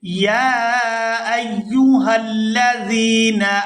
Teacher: یہاں یا کو 1 سے 2 سیکنڈ کھینچ کر ادا کریں گے